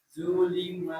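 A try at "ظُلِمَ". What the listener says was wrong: nah, dha-nya lebih tebal kenalnya. Zulima.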